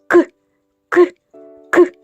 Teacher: Не можна ні потягнути ні проспівати він ніби вибухає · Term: звук к